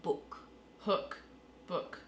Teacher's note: people to say it the sound is really forward oh so it's like the sound is sitting right at the tip of my lips when i say book